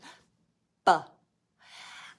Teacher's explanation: when you make the B sound, your lips close, B, and then your vocal cords are going to vibrate as you push the air through. And it's what's called a stop sound.